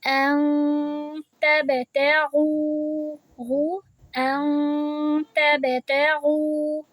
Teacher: لیکن اب ہم جب اس ان کو پڑھیں گے، کیونکہ اس کے بعد ہمیں اخفا کا لیٹر مل رہا ہے تا، تو ہم اس کے لیے اپنی زبان کو وہاں اوپر نہیں لگائیں گے، ہوا میں بیچ میں رکھیں، نیچے رکھیں، لیکن وہاں نہیں لگانی، اور آواز کو لمبی بھی کرنی ہے، 2 الف جتنی، یعنی 2 سیکنڈ جتنا ہم نے آواز کو لمبا کرنا ہے۔